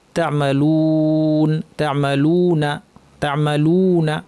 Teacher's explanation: যেমন তা'মালুন শব্দটা যদি আমরা খেয়াল করি, যদিও এটা আমরা আজকে পড়বো না, এটা আমাদের গত দিনের পাঠ ছিল, তারপরেও আমাদের সামনে যেহেতু শব্দটা আছে এখানে আপনি দেখতে পাচ্ছেন যে মাদ্দের ওয়াও আছে, অর্থাৎ ওয়াও সাকিন পূর্বে পেশ, এটাকে বলা হয় মাদ্দের ওয়াও, যেটাকে টেনে পড়তে হয়। এবং তারপরে যে অক্ষরটা নুন, তাতে একটা জবর আছে, তা'মালুন, তা'মালুনা, তা'মালুনা। · এই ওয়াওটাকে অবশ্যই টেনে পড়তে হবে, লু না পড়তে হবে।